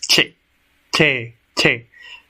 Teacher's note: La punta de la lengua se eleva hacia un punto justo detrás de los dientes superiores. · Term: la che